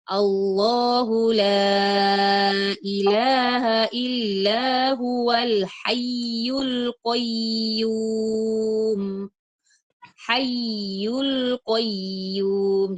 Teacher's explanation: Yang kedua, tadi ketika kita waqaf pada huruf bertasdid, yang kedua ketika kita membaca huruf waw dan ya bertasdid itu diberi nabar ya.